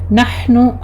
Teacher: ہا وسط حلق سے ادا کیجیے، ہمس ہوگا اس کے اوپر